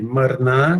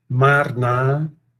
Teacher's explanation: Aqui eu substituí o schwa, né, ou alonguei o schwa, digamos, né? Aqui seria um A breve pronunciado como schwa, e aí um A longo é o causativo.